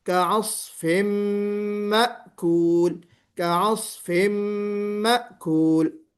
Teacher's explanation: तनवीन के बाद मीम आ रहा है, इदगामे कामिल विद गुन्ना